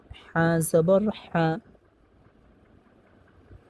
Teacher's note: হাকে উচ্চারণ করতে হবে দুই নাম্বার মাখরাজ হতে হলকের মধ্যখান হতে স্পষ্টভাবে